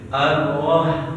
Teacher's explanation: Ar-roh getarannya cukup sekali aja